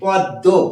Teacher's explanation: ম উচ্চারণ করবো না দ এর সাথে যুক্ত আছে বলে দ কে আমরা দৃত্ত উচ্চারণ করছি পদ্ম এটা প্রথমেই আলোচনা করেছি